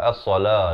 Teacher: As-sala, la itu dipanjangkan 2 harakat.